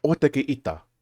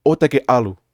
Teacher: because they're spoken with a lot of force, the glottal stop comes out really strongly.